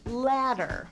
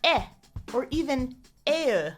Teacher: if you were from Boston, you'd raise your jaw so it would sound like eh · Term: ah raising